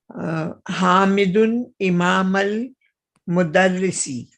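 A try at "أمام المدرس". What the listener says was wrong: Not imam, amam al-mudarrisi.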